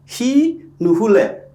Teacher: Here, the u sound is copied from the verb to the negative prefix.